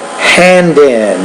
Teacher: So there's not really a pause after the D and then the letter I. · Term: blending